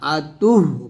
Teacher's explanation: হচ্ছে যে আমরা যখন হাটাকে সাকিন করি ওমরা আতু এরকম বলি তো এখানে আতু না আতুহ বলতে হবে তা গিয়ে হাকে ধরতে হবে মানে হা সাকিনের উচ্চারণটা হা সাকিনের উচ্চারণটা সঠিকভাবে আনতে হবে আমরা